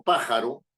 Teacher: la fuerza de la voz está delante de la penúltima, o sea, en la antepenúltima. Pájaro, ¿verdad? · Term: esdrújula, palabra esdrújula